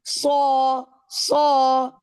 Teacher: صاد کو ہیوی کریں، یہ سین تو نہیں ہے نا، یہ تو صاد ہے